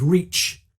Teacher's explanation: the unvoiced affricative ch sound of reach